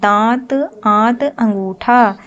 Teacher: अनुनासिक के उच्चारण में श्वास मुख और नाक दोनों से एक साथ निकलती है।